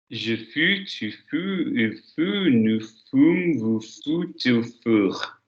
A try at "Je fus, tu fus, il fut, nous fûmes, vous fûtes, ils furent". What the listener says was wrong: Your vowels are not consistently staying with u, but I will forgive you. Fus, fus, fus. Look at my face. Fus, fus, fus, fume, fut, fur. Same face shape all the way down.